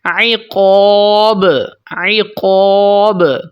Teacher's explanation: الف کو ہم نے موٹا پڑھا کیونکہ پیچھے موٹا حرف ہے